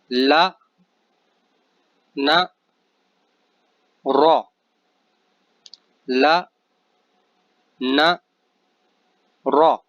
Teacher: ان تینوں میں زبان دانتوں سے اور پیچھے ہٹ جائے گی اور اوپر کی طرف لگے گی زبان کا کنارہ